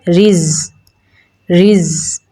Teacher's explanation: इसमें सिफ्त रखावत पाई जाती है तो इसकी आवाज़ को जारी रख के पढ़ेंगे